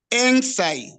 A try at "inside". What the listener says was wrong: Inside. You should stress the side. Inside.